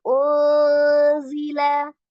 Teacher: Masuk di dalam ikhfa yang pertengahan ya. Maka disamarkan nilai samar dengan gunnahnya itu sejajar sama unzila.